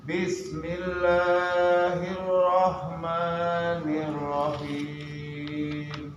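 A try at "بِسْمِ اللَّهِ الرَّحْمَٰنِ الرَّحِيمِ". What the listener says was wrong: Maju lagi, mulutnya dibuka dikit. Jadi jangan Bismillah.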